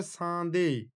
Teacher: না, শব্দের মধ্যবর্তী দয়ের পরে থাকা ম, এটি একটি নাসিক্য ধ্বনি, সেটি লোপ পেয়ে যাচ্ছে। এই নাসিক্যতা পূর্ববর্তী আ স্বরধ্বনিতে সঞ্চারিত হয়ে আয়ে চন্দ্রবিন্দু হয়েছে বা অনুনাসিক স্বর হয়েছে।